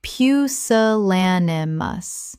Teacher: Five syllables with the stress on the third